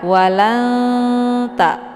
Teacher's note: ujung lidah sejajar dengan ujung gigi seri atas. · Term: huruf ta